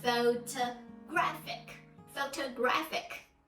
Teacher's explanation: so the stress is on the third syllable so we pronounce it as photoGRAphic